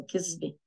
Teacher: كذبة is a lie. The is pronounced as a z in Lebanese